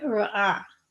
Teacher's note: It would be very back of the throat, almost like a g, way back there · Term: ayin